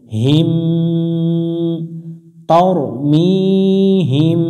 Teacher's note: মিম সাকিনের পরে বা অক্ষর পাইলে মিমটাকে একটু গুণনা করে পড়তে হয়